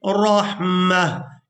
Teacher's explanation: اب یہاں پر بھی آپ لوگ علامات وقف دیکھ رہے ہیں، وقف کریں گے تو وقف کی صورت میں اس ایک آنکھ والی تا کو ہا میں بدل دیں گے اور ساکن ادا کریں گے